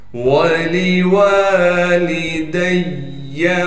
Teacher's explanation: لام کو بغیر کھینچے پڑھنا ہے، دال کو یاء مدہ سے ملا دیں گے، اس لیے کہ یہاں پر تشدید ہے اور تشدید ہونے کی وجہ سے تھوڑا سا ٹھہراؤ رکھیں گے۔ واو کو بغیر کھینچے پڑھنا ہے، لام کو بھی بغیر کھینچے پڑھیں گے۔